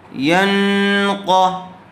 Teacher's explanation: یا نون ساکن سے پہلے یا آئی ہوئی ہے، یا کے اوپر زبر ہے، اس لیے یا کو نون سے ملا دیں گے۔ اور پھر نون ساکن کے بعد حروف اخفاء میں سے قاف آیا ہوا ہے، اس لیے یہاں غنّے کے ساتھ اخفاء کر کے پڑھیں گے